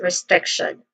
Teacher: Stress syllable is on the second syllable, strict.